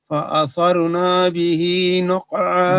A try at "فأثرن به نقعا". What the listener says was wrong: نون لمبی ہو گئی ہے. فأثرن به نقعا